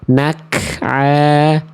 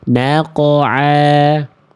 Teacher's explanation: Salahnya adalah qaf yang tadi berubah menjadi huruf kaf.